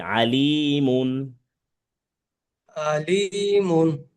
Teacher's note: আতে টান নেই, লিতে টান আছে।